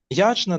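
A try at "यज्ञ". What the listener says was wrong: It's not yajna, yagya. Yagya dana.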